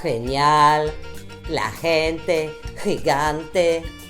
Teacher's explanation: Le G se prononce dans la gorge, il est guttural